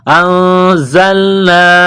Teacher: اس ناک میں آواز چھپانے کو اخفا کہتے ہیں. زا میں سیٹی کی آواز پیدا کریں گے، دانتوں کو ملائیں گے سختی سے. انزلنا، یہ مد ہے، اس کو تھوڑا سا کھینچنا ہے.